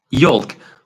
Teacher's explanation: for yolk, we don't pronounce the L